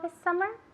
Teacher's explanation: Notice how she said this summer she linked the S sound with the S sound